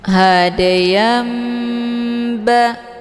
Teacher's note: Makna iqlab itu membalikkan, dibalikkan daripada bunyi tanwin menjadi bunyi mim sukun. Hadayam ba, jadi yang dibaca di sini adalah mim sukunnya bertemu huruf ba.